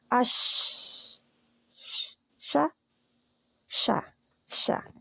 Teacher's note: منہ میں پھیلتی ہے، سیٹی نہیں ہے اس میں بلکہ پھیلنا ہے، تفشی ہے اس میں